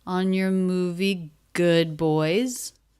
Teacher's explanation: Good boys, a little bit more stress on good. And then, as I said, boys, pitch goes up on your.